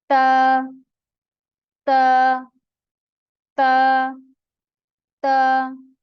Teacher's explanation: ता ता ता का जो पॉइंट है, जो ता जहां से अदा होता है वो है ऊपर वाले सामने के जो दांत हैं दोनों, उन दांतों के पीछे जो अपनी जबान की नोक लगाने से ता अदा होती है